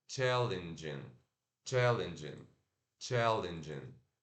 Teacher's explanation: Eu sei que é escrito com E, mas a gente tem que falar com I curto, tá? Não é challenging, não é challenge, é challenge, challenge, challenging.